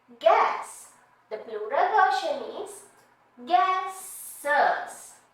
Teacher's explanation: in English in order to make it easier to pronounce we add a vowel